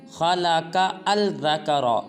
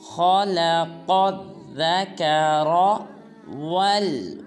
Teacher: خا کو پر ادا کریں گے، پھر قاف کو آگے ذا مشدد کے ساتھ ملائیں گے، بیچ میں جو الف اور لام کھڑا ہے ان دونوں کو نہیں پڑھنا، اور ذکر میں را کو پر ادا کریں گے، پڑھیں گے خلق الذکر والانثی۔